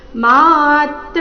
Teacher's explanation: ಮಾತ್ರ ಎರಡು ದೀರ್ಘ ತ್ರ ಮೇಲೆ ಆಘಾತ